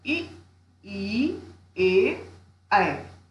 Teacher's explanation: उच्चारण करके आप स्वयं महसूस करेंगे कि जब इ, ई, ए, ऐ का उच्चारण किया जाता है तो जिह्वा का अग्रभाग सक्रिय रहता है, इसीलिए इसे अग्र स्वर कहते हैं।